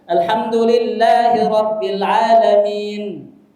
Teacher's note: Jadi nunnya belum jelas, belum keluar dengan baik, bibirnya sudah tertutup.